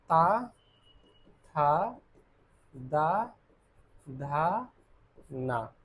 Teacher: दंत में ता वर्ग की ध्वनियां आ जाएंगी। ता वर्ग यानी ताल दंत ता, था, दा, धा, ना।